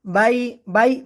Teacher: বাই লিনের হরফ টান ছাড়া স্পষ্ট করে পড়তে হবে দ্রুত